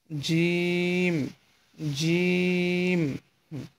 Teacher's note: এটা একটু মোটা হবে। জিম, আপনার জিহ্বার মাঝখান তার বরাবর ওপরে তালুর সঙ্গে লাগিয়ে জিম হরফটি উচ্চারণ করবেন